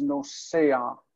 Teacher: In the present tense, the long vowel for the pattern like shomer becomes nosea with the a on the end, the furtive patach. The gutturals pull an a vowel.